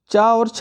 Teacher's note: च और छ वर्णों का उच्चारण स्थान कौन सा है च और छ वर्णों का तो यह तालू है